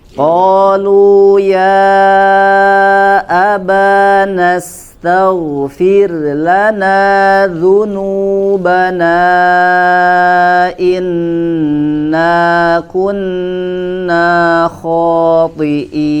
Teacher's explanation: Pada kata lana ya, berhati-hati supaya lamnya tidak dibaca dengan tebal ya